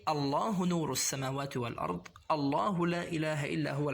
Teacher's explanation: we say Allah with a heavy lam because it suits the majesty of the word Allah